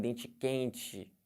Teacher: carioca já vem dente quente né chiado típico